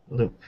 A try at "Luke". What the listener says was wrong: No, Luke. Luke with the sound at the end.